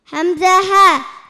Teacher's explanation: Hamza ha, sound produced from the deepest of the throat.